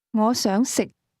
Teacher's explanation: Did you match the low level tone in the word to eat?